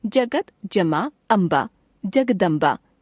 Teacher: व्यंजन त जमा स्वर अ, त का द में परिवर्तन।